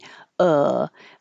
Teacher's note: it's low in the middle of the mouth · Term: uh vowel